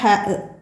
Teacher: തൊണ്ടയുടെ മധ്യം ഇവിടെ നിന്ന് കാറ്റോട് കൂടി പുറപ്പെടുന്നതാണ് ഹ